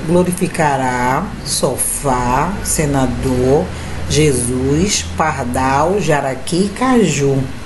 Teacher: a sílaba mais forte está na última sílaba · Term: oxítona